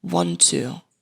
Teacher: Want to, they share the same consonant, so only one T sound is pronounced and it's a true T sound.